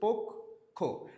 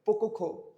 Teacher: যেমন দেখো এই জায়গার ভিতরে পক্ষ শব্দটা যখন তুমি উচ্চারণ করতেছো, ফার্স্টে তুমি থামতেছো না, পোক, এরপর বলতেছে খো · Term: হসন্ত